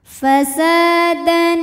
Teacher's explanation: Sa Di sini ada hukum tajwid namanya mad thobii ziri sebabnya ada Alif didahului harakat fathah maka huruf Sin kita panjangkan dua harakat